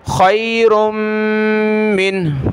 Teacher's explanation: جب رکیں گے وقف کریں گے تو خیر من، لاسٹ میں ہا کی تھوڑا سا ساؤنڈ آئے گا